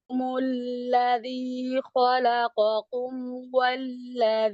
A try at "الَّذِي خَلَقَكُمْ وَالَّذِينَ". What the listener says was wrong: না, থেমে গেলে তো নুনে সাকিন করে থামবেন। আরবি লেটার গুলা, আরবি শব্দ সব সময় থামবেন সাকিনে, শুরু করবেন মুতাহারিক মানে হারাকা দিয়ে,